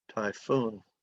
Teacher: is crazy so you pronounce ph like f typhoon typhoon typhoon two syllables accent on the second syllable